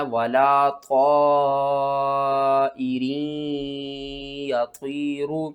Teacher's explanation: یہاں پر آپ نے طا کو موٹا کر کے پڑھنا ہے، 5 الف کے برابر کھینچ کر پڑھنا ہے · را کے نیچے زیر ہیں تو را باریک پڑھی جائے گی